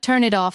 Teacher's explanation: Turn it off doesn't sound like three separate clean words. It flows together almost like turn it off spoken as one smooth unit. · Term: linking